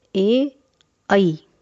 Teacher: सूत्र ए दैतो हो कंठ तालु, अर्थात ए और ऐ इन संयुक्त स्वरों का उच्चारण स्थान कंठ तालु है, यानी इनके उच्चारण में कंठ और तालु दोनों का प्रयोग होता है, इसलिए इन वर्णों को कंठ तालव्य कहा जाता है।